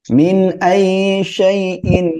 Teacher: মিন এখানে কোন গুন্না হবে না স্পষ্ট করে পড়বেন